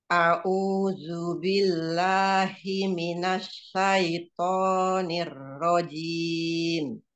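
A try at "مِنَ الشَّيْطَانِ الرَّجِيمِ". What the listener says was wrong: Shinnya ya belum tafasinya ya. Jiminash, jiminash, nash, jangan nos, jauh. Jiminash.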